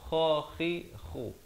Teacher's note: Kha di hujung kerongkong